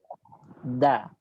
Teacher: Makhrajnya keluar dari punggung ujung lidah, ditempelkan ke gusi gigi seri atas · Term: huruf dal